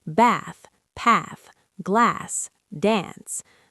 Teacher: In standard British RP, these words use a long back A sound.